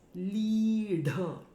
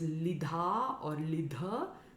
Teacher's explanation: fire lead her means afflicted now the word here is lead the sound is made by the tongue in the retroflex position so it's actually hitting the palette the roof of the mouth